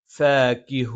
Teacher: മേലെ മുൻപല്ലിന്റെ താഴ്ഭാഗം താഴെ ചുണ്ടിന്റെ വള്ളയിൽ സ്പർശിക്കും